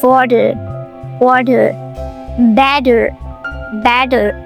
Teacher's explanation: a T in between two vowels, A and E, and it changes to a flap T